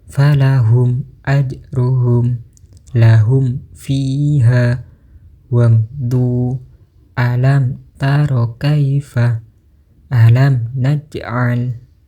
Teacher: menyuarakan huruf mim dengan terang dan dengan bibir tertutup. Apabila mim sukun bertemu wau dan fa, maka membacanya harus lebih diperjelas lagi. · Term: idhar syafawi